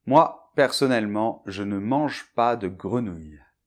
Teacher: Mais avec le mot grenouille, on ne peut pas, on ne peut pas dire […], ça fait trop de consonnes, de sons consonnes à côté, et du coup, on est bien obligé de prononcer bien clairement le son [ə]